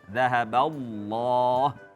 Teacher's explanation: lafzul jalalah Allah itu harus tebal dalam hal ini karena berharokat fathah.